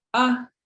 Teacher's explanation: The next vowel we see is just a single A. We call it a short A, and it's high tone.